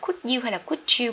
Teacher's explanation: Thường d dài, d với y dài thì nó sẽ thành chữ ja, như kiểu từ job các bạn nhé.